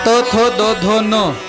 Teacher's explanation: ज्या वर्णाचा उच्चार करत असताना जीभ दाताला लागल्याशिवाय उच्चार होत नाही त्या वर्णांना दंती वर्ण म्हणाव